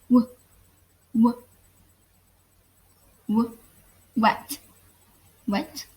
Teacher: the tongue never actually comes in contact with the top of your mouth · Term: approximants